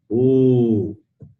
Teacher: the letter U is produced by rounding the lips. Therefore, it is called labial.